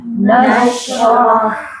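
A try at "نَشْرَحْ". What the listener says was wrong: Nah, itu ngalirnya seimbang, bagus Bu.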